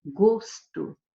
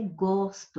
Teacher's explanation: Agora, aqui não é gosto, aqui é gosto. Aqui a pronúncia do primeiro O é uma pronúncia aberta.